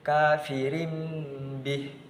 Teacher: Jadi tanwinnya tadi diganti dengan huruf mim. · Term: iqlab